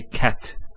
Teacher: So the t doesn't have any vowel associated with it. It's actually just a stop on the T. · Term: sukun